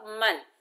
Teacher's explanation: میم کو نون ساکن سے ملائیں گے، نون ساکن کا اظہار ہوگا